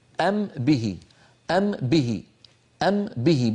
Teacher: نطبق على ميم ونجافي الشفتين عن باء